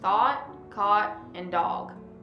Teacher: In words with the vowel sound top right A, the vowel sound becomes an open O